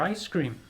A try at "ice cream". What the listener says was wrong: No, ice cream. You're saying ice cream, like an American. No, it's a different emphasis.